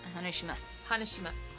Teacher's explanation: But you don't pronounce the su at the end. Yeah, you leave it off.